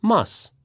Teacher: must sounds like mus without the final T sound